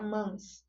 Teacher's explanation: Então ele ganha essa outra perspectiva. Então o A acabou se unindo com o M e formou um som nasalizado.